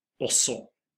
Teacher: We say the O at the beginning as an O, and the G is not pronounced